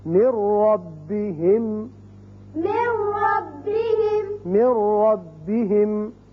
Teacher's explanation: اب نون نہیں پڑھا جائے گا، میم را سے ملے گا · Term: ادغام بغیر غنہ